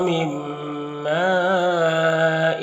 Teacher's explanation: نون ساکن کے بعد میم ہے تو نون کو میم سے ملا کر غنہ کے ساتھ پڑھیں گے، اس کو ادغام ناقص کہتے ہیں۔